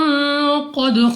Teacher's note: دال ہمارے پاس قلقلہ میں سے ہے، تو جب ہم ادا کریں گے ہمارے مخرج میں جنبش سی ہوگی، یعنی ہمیں اپنی آواز واپس لوٹتی ہوئی سنائی دے گی